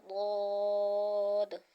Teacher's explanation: اس کا جو مخرج ہے وہ زبان کی کروٹ اور اوپر کی جو داڑیں ہیں ان کی جڑوں سے ادا ہوگا ، اور حروف مستعلیہ ہے، پر کر کے ادا کریں گے۔ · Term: حرف حافیہ